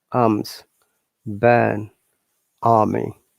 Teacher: because this is the British IPA, you'll not be able to listen to R sound in many cases. So, for example, the words like burn and army.